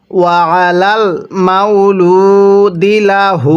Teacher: ওলাল ও আলাল মালুমা লামের মধ্যে কিন্তু এক আলিফ টান দিব পেশের পরে ও সাকিন থাকলে সেখানে আমাদের এক আলিফ টেনে পড়তে হয়